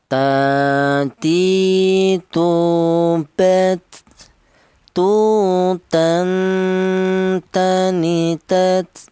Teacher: Huruf ta ini keluarnya huruf berasal dari ujung lidah menyentuh pangkal gigi seri atas